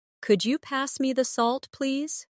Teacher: my voice rises on could you and falls gently at the end